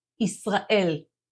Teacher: change the Zed sound of Israel to an S sound shift the syllable stressing to the end and start with a y sound